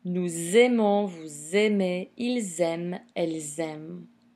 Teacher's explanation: And, of course, the phonetic event of liaison in the plural person.